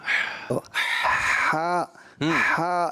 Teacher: یہ حلق کے درمیان سے ٹھنڈی آواز